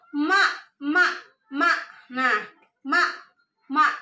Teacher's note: pita suaranya akan bergetar dan tidak ada nafas yang mengalir